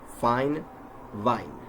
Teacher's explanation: when we add voicing to the F sound, it turns into V